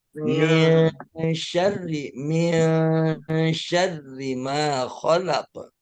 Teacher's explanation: nunnya jangan dibaca min, jangan nun beneran, tapi ngambang